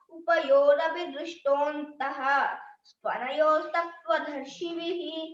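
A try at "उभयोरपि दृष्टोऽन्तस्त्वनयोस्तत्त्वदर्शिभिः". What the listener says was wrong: స్తనయో అనకూడదు అక్కడ త్వనయోస్త తాకు వావత్తు మాత్రం అంతే సాకు తావత్తు వావత్తు లేదు ఓన్లీ తాకు వావత్తు పెట్టుకో త్వనయోస్తత్వదర్శిభిః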